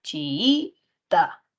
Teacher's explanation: Es una palabra grave, chiita, mayor fuerza de voz en la segunda I.